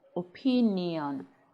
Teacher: Now you have two I's in opinion, right? The sound falls on the second I. Opinion. Okay, not the first one. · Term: sound ye